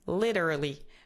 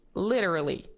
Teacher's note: there is a flap T, and then a R at the back of your mouth, R, and then li.